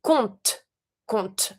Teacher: So just say compte, compte. I do pronounce my T, but I do not pronounce my P